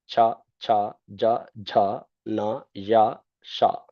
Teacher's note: With the tongue at the rear of the palate, cha, cha, ja, jha, na, ya, sha.